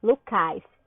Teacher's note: Se a sílaba tônica é Lu, eu colocaria a sílaba tônica no cais